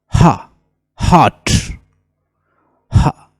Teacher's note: ये साउंड जो है ग्लॉटल साउंड